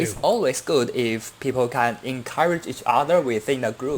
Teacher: You have the auxiliary can, then you have the main verb there. You're putting a little too much stress on the auxiliary verb there. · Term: choppy rhythm